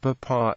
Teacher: In the common pronunciation of papa, the initial P is aspirated, whereas the medial P is not.